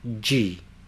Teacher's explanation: In the second syllable we have the palatalization of the consonant D, not a hard D sound, but a soft J sound, together with the E, G.